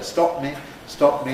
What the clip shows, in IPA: ˈstɒʔp mi